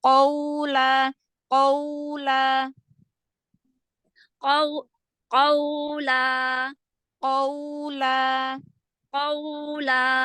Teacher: Nah, yang qaf, yang fathah justru ditebalkan.